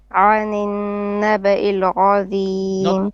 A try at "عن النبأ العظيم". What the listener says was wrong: Not ra. This is عين is flat. عظيم, not عظيم. You keep saying ra. You say نبأ العظيم. It's not ra. It's عظيم. ظيم is heavy.